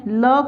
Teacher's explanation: ल के उच्चारण में जो हमारे मुख से वायु है वो दोनों साइड से निकलती है, तो इसे पार्श्विक वर्ण माना गया है।